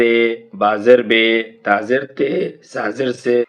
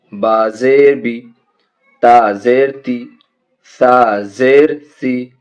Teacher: को मारूफ पढ़ा जाए और मजहू आवाज से बचा जाए और जेर की जो आवाज है ये नीचे को जाती है यानी जल्दी भी पढ़ना है और मारूफ भी पढ़ना है